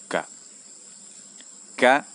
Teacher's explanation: keluar dari pangkal lidah namun agak tinggi sedikit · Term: huruf Kaf